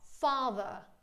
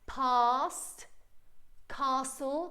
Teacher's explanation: all of this like a long sound, and my jaw is very open